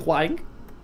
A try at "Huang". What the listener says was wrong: What would you say like this? Huang. Huang. There is no R. Huang. Huang. Huang. Huang.